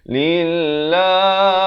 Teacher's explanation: Lillah dibacakan nipis 2 harakat.